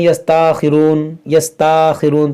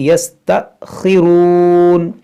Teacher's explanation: یہاں پر بھی حمزہ ساکنہ ہے تو اس کو جھٹکا دے کر پڑھیں گے۔ بعض لوگ کیا پڑھتے ہیں یستاخرون، یستاخرون، تو یستا نہیں بلکہ یستأخرون۔